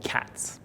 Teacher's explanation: s is unvoiced so we don't use our vocal cords to make the sound